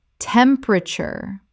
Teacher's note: This is three syllables in natural speech. The middle syllable is swallowed.